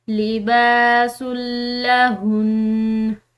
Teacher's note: व अंतुम लिबासुल लहुन, यहाँ पर वक्फ मुतलक की अलामत आ रही है इसलिए हमने इस नून को वक्फ के साथ यानी ठहराव के साथ पढ़ना है और चूंकि ये नून मुशद्दिद है और मुशद्दिद नून जो है उस पर गुन्ना किया जाता है तो हम इसको गुन्ना के साथ लेकिन ठहराव के साथ पढ़ेंगे।